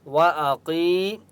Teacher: वअक़ी, या मद्दा है, क़ाफ को एक अलिफ की मक़दार खींच कर पढ़ेंगे और क़ाफ मुस्तअलिया में से इसलिए क़ाफ को मोटा पढ़ेंगे।